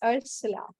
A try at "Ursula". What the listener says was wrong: Yeah, Ursula, but yeah, the general pronunciation is with the SH sound, Ursula. Ursula. If you want to get back to its more roots, like as a Nordic name, would be Ursula, as in Ursus, the bear.